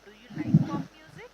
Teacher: do you like वरती कमी stress आहे माझा, पॉप म्युझिक वरती जास्त स्ट्रेस आहे · rising intonation is nothing but आपण स्लो मध्ये चालू करतो आणि एंडिंगला आपला पिच वरती असतो.